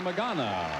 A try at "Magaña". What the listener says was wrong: Magaña. Magaña. Magaña. Well, it wouldn't sound the same. It has a little tilde for magaña.